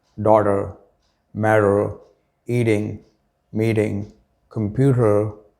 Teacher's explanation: work on your flap t which sounds like a quick d